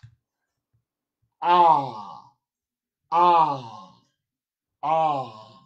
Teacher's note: So the open back unrounded vowel goes like this.